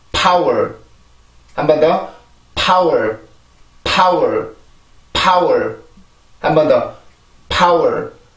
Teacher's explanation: P 발음은 공기가 아주 강하게 만들어주고 나서 그걸 이용해서 그 힘을 이용해서 내가 강세로 가주는 거예요.